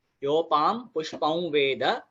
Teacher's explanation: उसके बाद पुष्पाम, जैसे मैंने आपको बताया, योपाम पुष्पम वेद, पुष्पम का बन जाएगा पुष्पौ वेद, पुष्पौ वेद। औ का नेजल साउंड जो है वो व को जोड़ता है